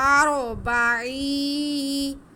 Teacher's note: یا ساکن سے پہلے زیر ہو تو یا مدہ ہوتی ہے، یہ بھی یا مدہ ہے۔ عین کی آواز کو ہم ایک الف کے برابر کھینچ کے پڑھیں گے۔